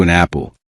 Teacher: You see an apple, but you may hear something closer to an apple. The N sound connects with apple. So your ear may feel as though the second word begins with N.